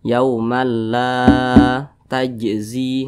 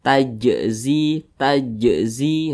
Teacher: apabila dia sukun atau karena disukunkan gitu ya maka cara bacanya itu dipantulkan ini huruf jimnya ini sukun Nah maka cara bacanya itu dipantulkan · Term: Qalqalah